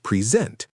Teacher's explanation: If you stress the second syllable, it means to give a speech.